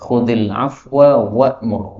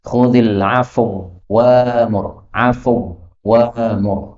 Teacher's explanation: Wawu ketemu wawu boleh idgham. Tetapi bacaan idghamnya disambung dengan hamzah diganti alif ya.